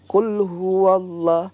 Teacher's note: Allah sebelumnya fathah, bacanya berarti tebal, bukan huwallah, bukan, tapi huwallah, ada tebal deh.